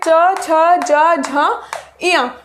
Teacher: च छ ज झ इया में हम इनको स्पर्श संघर्षी व्यंजन भी बोलते हैं